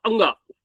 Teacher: तो जहां जीवा अंत में चली जाती है वहां अंग निकलता है या ञ निकलता है · जीवा अंत में चली जाती है वहां अंग निकलता है या ञ निकलता है। आप नाक को दबा के वो वर्ण नहीं बोल सकते, इसलिए वो नासिका के प्रयोग से बोला जाता है अंत में जितने भी आ रहे हैं। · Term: अनुनासिका